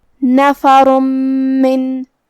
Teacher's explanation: میم حروف الادغام بغنہ میں سے ہے اور ادغام کا معنی ہے حرف کو حرف میں داخل کرنا، تو ہم یہ تنوین کو میم میں ملا کے غنہ اور تشدید کے ساتھ یہ حکم کو ادا کریں گے